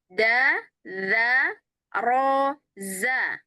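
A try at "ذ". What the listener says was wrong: saya itu dengarnya antara zal dengan zai, Ibu suka kebalik.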